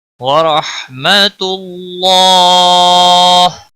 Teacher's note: ورحمۃ اللہ، را کے اوپر زبر ہے، موٹا پڑھیں گے. رحمت اللہ، اللہ کے لام کو موٹا پڑھیں گے پیش کی وجہ سے، اور اس کے اوپر کھڑی زبر ہے، ایک الف کے برابر کھینچ کر پڑھیں گے.